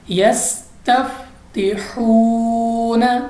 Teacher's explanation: वाव मद्दा है क्योंकि वाव साकिन से पहले पेश आ गई इसलिए वाव मद्दा है, हम इसको खींच कर पढ़ा है इसलिए। एक बार फिर से पढ़ते हैं यस्तफ्तिहून।